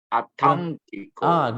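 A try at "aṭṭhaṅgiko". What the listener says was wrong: Great. You get in there. Almost get in there.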